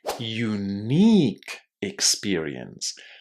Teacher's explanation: I really hope for your sake and for your listener's sake that you put the stress on the second syllable. Never stress this word on the first syllable.